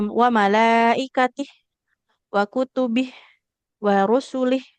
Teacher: Kalau wakof maka semuanya jadi sukun, nggak usah kita baca panjang ya